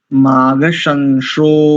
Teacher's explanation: बहुत सुंदर एक त्रुटि है बेटा माघ शंसो शंसो नहीं शंसो दंत सकार है यहाँ पर